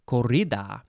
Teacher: you have to probably roll the r